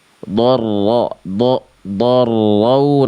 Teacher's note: ro tasdidnya jangan samar sih getarannya